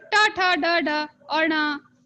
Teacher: मूर्धन्य में हमारा ट वर्ग पूरा है